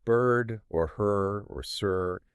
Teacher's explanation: The R-colored vowel, sometimes called a rhotic vowel, is any vowel sound that basically has the quality of the R sound blended into it. It's not two separate sounds like vowel plus R. The vowel itself is colored by the R. Like in words like bird or her or sir.